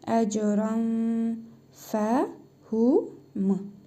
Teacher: İhva qaydasına görə tənvindəki nun hərfini burnumuzda tələffüz edərək bir əlif miqdarı uzadırıq